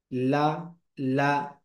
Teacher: জিহ্বার আগা অগ্রতালুর সাথে লাগিয়ে উচ্চারিত হয়।